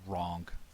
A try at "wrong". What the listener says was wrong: Did you put a hard G on the end of that? No, you used a hard G. You said wrong.